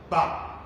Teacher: Abinda yake nufi shine idan iska ta taho daga huhu ta biyo kwaroro na magana, idan misali ta zo wajen mai motsi da mara motsi a labba kamar wajen furucin ba, za a ga leɓen ƙasa ya tashi ya toshe mafitar iskar nan ta hanyar haɗuwa da leɓen sama. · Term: 'yan tsayo